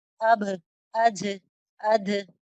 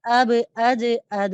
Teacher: ये बगैर हा के साउंड के इसे पढ़ना होगा